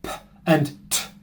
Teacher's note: Now, in both French and Portuguese, they have these sounds, but in English, these sounds are pronounced with a thing called aspiration, which is essentially a big puff of air, which they are not pronounced with in Portuguese and many other languages around the world.